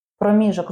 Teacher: Проміжок з наголосом на другому складі.